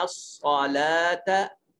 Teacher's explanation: ये लाम के ऊपर खड़ा ज़बर है, इसको एक अलिफ के बराबर लंबा करेंगे